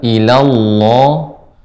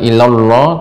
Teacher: Terus diperhatikan ee lafaz Allah dibaca dengan tebal. ilallah. Jangan ilall tapi ilallah tidak dimonyongkan bibirnya.